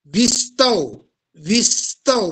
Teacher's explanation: स चा भार वर येतो बघा तुम्ही उच्चारताना विस्तव विस्तव म्हणजे त्या वी कडे तो स ओढला गेलेला आहे त्या वी वरती त्या स चा भार आलेला आहे